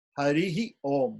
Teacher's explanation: there is a Visarga, which is an echo of the I